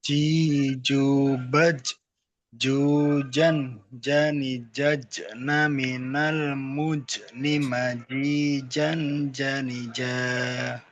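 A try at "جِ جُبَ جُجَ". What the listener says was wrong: Oke, sekali lagi Pak, maaf panjang pendeknya ya Pak ya.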